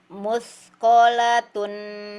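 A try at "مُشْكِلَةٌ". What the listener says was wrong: Muskolatun. Agak panjang dikit.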